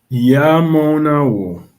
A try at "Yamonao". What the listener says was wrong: Très bien. French, très bien. Well done.